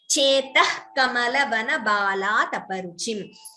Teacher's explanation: Visarga followed by Ka is Jihva Muliya. So we don't chant the Visarga completely.